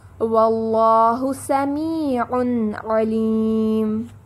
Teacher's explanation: تنوین کے بعد عین آ رہا ہے تو یہاں نون ساکن کا اظہار ہے، ہم نون کو واضح کر کے پڑھیں گے.